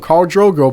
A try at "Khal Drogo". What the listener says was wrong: Did you just call him Carl? Carl.